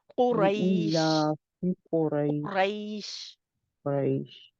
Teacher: शीन की आवाज आनी चाहिए पीछे, पता लगना चाहिए कि शीन आ रहा है, तफशी हो उसमें।